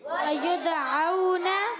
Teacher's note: وید یا پر پیش ہے، یا کو دال سے ملانا ہے، دال ساکن ہے، کلکلا والا ہے، کلکلا ہوگا، آواز لوٹ کر آئے گی. وَيُدْعَوْنَ، اور پھر واؤلین ہو گیا، واؤ ساکن سے پہلے زبر، واؤلین ہے، نرمی سے ادا کریں گے.